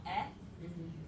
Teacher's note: I could see somebody also doing this with an open middle front vowel.